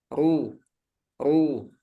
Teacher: keadaan yang keempat rnya berharakat domah ru ru ini dibaca tebal